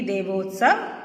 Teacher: आ और उ मिले तो क्या हमारी ओ की साउंड आती है